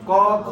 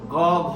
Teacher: লাগে তুমি যদি এখানে হাতও দাও তাহলে তোমার একটু অনুমান হবে ক খ বললে যতটানা কাপে গ ঘ বললে তার চাইতে বেশি কাঁপে